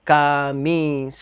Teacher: La penúltima sílaba es la sílaba tónica.